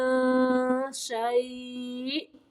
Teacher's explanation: حمزہ کو جھٹکا دینا ہے ساکن کرتے ہوئے